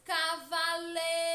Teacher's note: palavra Cavaleiro passa pronunciar lentamente como se estivesse chamando alguém Cavaleiro percebam que a sílaba que mais demora a ser pronunciada é lei · Percebam que a sílaba que mais demora a ser pronunciada é lei. Portanto, lei é a sílaba tônica.